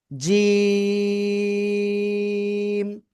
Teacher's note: জিহ্বার মধ্যকান তার বরাবর উপরে তালুর সাথে লাগাবেন, লাগিয়ে শক্ত করে উচ্চারণ করতে হবে।